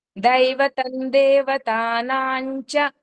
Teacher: దేవతానాంచ చ ముందు అనుస్వరం వచ్చింది దాన్ని ఇణీ కింద పలకాలి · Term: ఇని సౌండ్